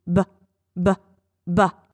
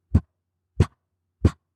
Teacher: B is b, b, b. My mouth is doing exactly the same thing, but B is on voice and P as in pig is off voice.